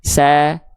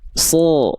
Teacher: Nah, gitu ya. Nah, karena pangkal lidahnya naik, itu vokal A akan tertransformasi jadi seperti O, bukan A lagi. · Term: huruf tebal